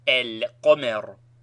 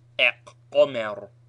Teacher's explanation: the lam of alif lam is pronounced and carries sukun, e.g. el-qomer, and not eq-qomer. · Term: lunar